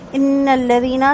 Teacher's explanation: نون کی تشدید پر دو حرکت غنہ کریں گے، اور لذینہ میں جو نون ہے لاسٹ میں اس کو کھینچیں گے نہیں۔